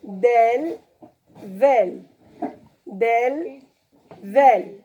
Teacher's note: La langue, elle est à l'intérieur. Vel, on sort le bout de la langue aussi.